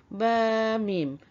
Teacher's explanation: Makhraj dia sama iaitu di antara kedua-dua bibir. Tempat keluar makhraj.